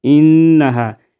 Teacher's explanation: انها ادھر نون مشدد میں ہم غنہ کریں گے